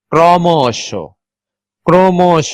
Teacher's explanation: ফলা থাকলে অধ্বনির উচ্চারণ ও ধ্বনির মত হয় বা সংগৃত হয় অর উচ্চারণ যখন অর মতো না হয়ে ওর মত হবে সেই উচ্চারণটাকেই বলা হয় সংবৃত উচ্চারণ